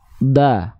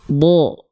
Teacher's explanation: nah keluarnya terdengar seperti vokal o kan Kenapa terdengar seperti vokal O karena dia termasuk ke dalam huruf yang tebal · huruf tebal itu ketika dia berharokat fathah, bunyinya tidak akan condong pada vokal A. Tapi dia condong terdengar seperti mengeluarkan bunyi vokal O.